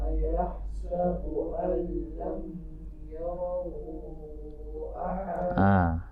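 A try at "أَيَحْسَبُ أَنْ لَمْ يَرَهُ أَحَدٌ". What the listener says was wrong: Ini nggak boleh dengung. Ayahsabu al lam yarahu, mim mati bertemu dengan ya. Apa hukumnya itu? Izhar syafawi, jelas dan terang di bibir, tidak boleh berdengung ya. Lam yarahu.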